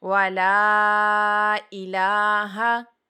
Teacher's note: وَلَا کو لمبا اس لیے کیا، مد ڈلی ہوئی ہے اس کے اوپر، ٹھیک ہے۔ وَلَا إِلَٰهَ، لاہ، دیکھیں اس کے اوپر کھڑا زبر تھا، اس کو لمبا کیا، جو پڑی زبر ہے اس کو لمبا نہیں کیا، اس کو لمبا کرنا ہی نہیں ہے۔